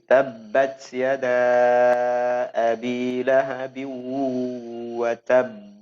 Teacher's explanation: Tahan dulu baru mantul. Itu yang disebut dengan qalqalah kubra.